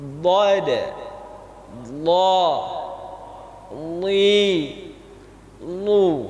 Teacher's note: tepi lidah kita kena dengan geraham bahagian atas. Dan huruf dhad ini ada salah satu sifat cara keluarnya yang namanya istitalah, panjang dia makhrajnya.